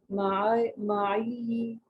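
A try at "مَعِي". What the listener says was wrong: अच्छा सिस्टर जी, यहाँ पर तशदीद नहीं है ना, तो माई बस इसको इतना बस खत्म कर दें, इसको माई। हाँ जी, कोई कोई इसके ऊपर हरकत में से कुछ नहीं है ना, जेर जबर पेश कुछ नहीं है, तो माई बस इसको यहाँ पर रोक दें।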